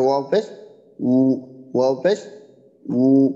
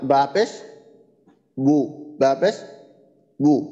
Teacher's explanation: ঠোঁট গোল অবস্থায় ওয়াবের উচ্চারণটা, আর ঠোঁট স্বাভাবিক অবস্থা থেকে ঠোঁট গোল হবে সেটা হলো বায়ের ক্ষেত্রে